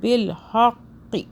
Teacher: بالحق، ہا کو حلق سے، قوف کو موٹا